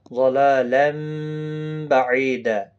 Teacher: اقلاب کہتے ہیں، تنوین کی آواز میم میں بدل جاتی ہے